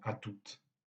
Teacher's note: on maintient la prononciation du T même dans l'abréviation à toutes. Cela pour distinguer, encore une fois, de la forme homophonique à tout qui a un autre sens.